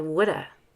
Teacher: Sometimes we drop the V and say woulda. Notice the use of the fast D.